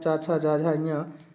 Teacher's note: जो चा वर्ग होता है, चा, छा, जा, झा, ञ, इन्हें स्पर्श संघर्षी भी कहा जाता है